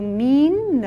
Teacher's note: न में अ की अल्प ध्वनि